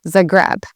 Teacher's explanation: how I've heard it said a lot is Zagreb. Again, putting the emphasis on the second part of the word and not the first. Here in Croatia, a lot of the emphasis is on the first part of the word.